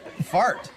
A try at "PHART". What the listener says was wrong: No, it's pronounced part. The H is silent.